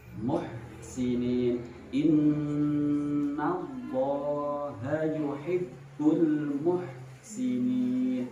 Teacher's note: Itu adalah suara hak yang terdapat di tengah tenggorokan.